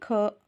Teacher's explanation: ख अघोष और महाप्राण है